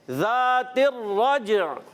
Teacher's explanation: اور یہاں پر پیارے بچوں را پر زبر آنے کی وجہ سے پر رہے گا را, اور جیم حرف قلقلہ میں سے ہے, قلقلہ ادا کریں گے, آواز لوٹ کر آئے گی